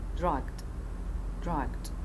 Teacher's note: شوفوا بنات عندنا final sequence صوت الج وصوت الد اللي both are stopped, therefore we have missing explosion for the sound g